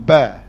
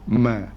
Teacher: Kita kata ba ni di antara tengah bibir. Tetapi mim ni dia sedikit depan ni.